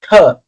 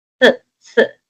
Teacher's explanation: your tongue is between your teeth and there is constant air passing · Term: fricative sound